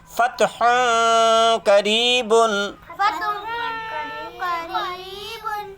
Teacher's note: تنوین کو ظاہر نہیں کرنا ہے بلکہ اخفا کرنا ہے۔ دیکھو تنوین کی آواز کو ناک میں لے جائیں گے،